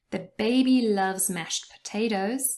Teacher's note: mashed potatoes, if you say it fast, the t in mashed disappears.